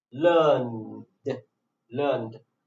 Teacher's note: because n is voice consonant sound, so ed is pronounced in voice consonant sound too